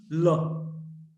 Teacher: La is a voiced alveolar lateral. This is also a kind of approximant.